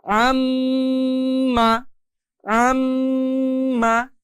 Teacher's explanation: আমি এই আম্মা উচ্চারণের ক্ষেত্রে শুধুমাত্র আম্মা এতটুকু সময় না দিয়ে অনেক বেশি সময় দিয়েছি কিভাবে আম্মা আর এই আম সময় দিতে গিয়ে আমাদের নাকের মধ্যে বা ভিতর থেকে একটা গুনগুন আওয়াজ বের হচ্ছে এই যে গুনগুন আওয়াজটা নাকের বাসি হতে মূলত এটা উচ্চারণ করতে হয়। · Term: গুন্নাহ